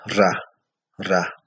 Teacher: vibrante porque al pronunciar este sonido, pues en nuestro aparato fonador se oye como una especie de vibración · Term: sonido vibrante